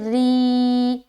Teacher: را کے نیچے کھڑی زیر ہے، لہٰذا را کو ہم کیا کریں گے، باریک رکھیں گے